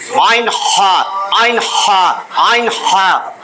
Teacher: দুই নম্বর মাখরাজ, একেবারে হলকের মধ্যখান থেকে আইন হা